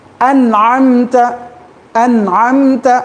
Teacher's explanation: نون کو بتانا, صرف بتانا, کھینچنا نہیں. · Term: اظہار